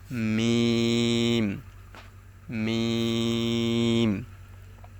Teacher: মিমের উচ্চারণটা হচ্ছে দুই ঠোঁটের শুকনা জায়গা হইতে